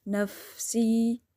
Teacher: سین میں سیٹی، زیر کے آواز ای کی، یا مدہ صرف ایک الف کی مقدار، زیادہ نہیں